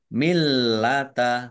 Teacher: lamnya juga dibaca dobel ada tasdidnya